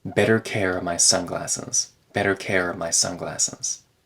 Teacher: reduced to try to take better care of my sunglasses here of turns into uh before an M sound